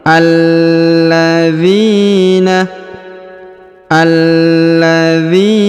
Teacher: huruf A dibaca langsung sambung ke lam yang berharokat tasdid